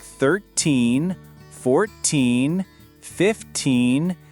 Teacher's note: For numbers like 13, 14, 15, the stress is on the second syllable, the teen part.